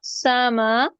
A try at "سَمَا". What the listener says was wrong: सामा नहीं है, समा, समा, यही तो हमने फर्क करना है।